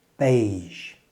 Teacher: The pronunciation of beige is unusual because it comes from a French word, and the j at the end is a soft j sound, like the S in pleasure.